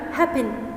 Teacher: لأن أنا عندي ده الفيرب ده 2 syllables مقطعين، والفيرست syllable هو اللي stressed. الفيرست syllable happen هو اللي longer و louder